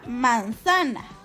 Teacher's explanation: Nuestra penúltima sílaba está acentuada, así que es una palabra grave.